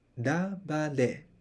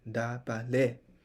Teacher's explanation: you should have a higher tune at the end. And these two syllables are in default low tunes.